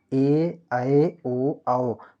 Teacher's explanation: विज्ञान के अनुसार ए ऐ ओ औ संयुक्त स्वर है कक इनके उच्चारण में दो स्वरों का योग दिखता है